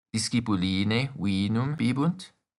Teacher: We also add a rising intonation at the end of the sentence, as well as ne.